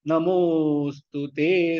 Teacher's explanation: மோ நெடில் எடுத்து இழுத்து சொல்லலாம். ஸ்து ஷார்ட் ஆயிடும்.